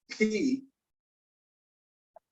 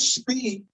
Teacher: if you just go P, you should feel a little bit of a puff, right? But if you went speed, nothing.